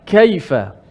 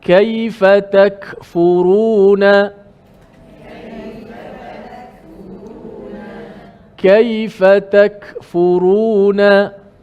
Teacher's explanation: Bila sebut kaf secara fasihnya mesti ada sedikit elemen tu, hamas.